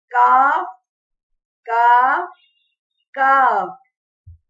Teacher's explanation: زبان کا آخری حصہ اوپر تالو کے سخت حصے سے لگے تو کاف ادا ہوتا ہے، یہ باریک ادا ہوتا ہے